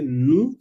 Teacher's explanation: porque OU se pronuncian U y la mayoría de los consonantes cuando van al final no se pronuncia